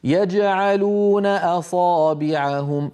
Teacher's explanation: لما أقول يجعلون أصابعهم، أقلقل الجيم وأنتقل مباشرة إلى حرف العين. فإذا حرف القلقلة لما يكون بعده شيء حروف أخرى فإنه يكون مقلقلا، لكن درجة الوضوح تكون أقل بقليل مما لو كان حرف القلقلة موقوفا عليه.